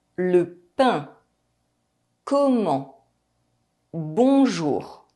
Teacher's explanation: The vowel sound is nasalized and we do not pronounce the N or M. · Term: nasal vowels